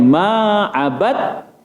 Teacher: Dal dengan ta mutajanisain. Sejenis makhrajnya. Makhrajnya adalah hujung lidah. Ad-at, hujung lidah. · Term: idgham mutajanisain